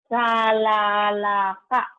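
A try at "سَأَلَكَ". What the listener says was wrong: Bukan la tapi a yang nggak bisa gabung. Sa'alaka.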